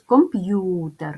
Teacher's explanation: Отже три склади ділимо на склади ком п'ютер ставимо наголос комп'ютер наголос паде на другий склад